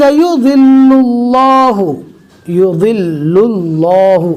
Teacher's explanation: اللہ کے لام کو پور پڑھیں گے اس لیے کہ اللہ کے لام سے پہلے پیش آ گیا